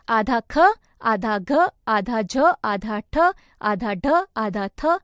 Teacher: जिन व्यंजनों का उच्चारण करते समय अधिक समय लगे और अधिक प्रयत्न करना पड़े तथा सांस तेजी से बाहर निकलती हो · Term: महाप्राण व्यंजन